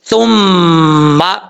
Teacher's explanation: اس کا مخرج ہے زبان کا سیدھا اوپر والے دانتوں کے اندرونی کنارے سے لگے تو سا پڑھا جاتا ہے، سا، سا بغیر سیٹی کے۔ ثم، میم مشدد ہے، ایک الف کی مقدار غنہ کر کے پڑھیں گے